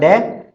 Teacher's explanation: इसका स्पृष्ट संवार नाद घोष और अल्प प्राण